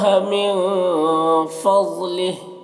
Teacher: من کے نون میں اخفا ہوگا، نون کی آواز کو ناک میں چھپا کر پڑھیں گے